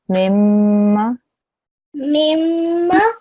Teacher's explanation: That means a ghunna sound must be heard, okay? So mimma, when I join the two memes, I should hear the joining sound for 2 seconds, okay? The ghunna sound.